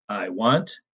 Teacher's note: you have an unstressed syllable followed by a stressed syllable. The unstressed comes first, and then the stressed.